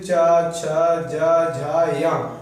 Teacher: च वर्ग वाले किससे बोले जाते हैं तालू से बोले जाते हैं